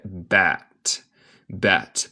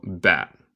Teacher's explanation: comemos el T final y dejamos un glottal stop, un momento de silencio. Pero esto es opcional.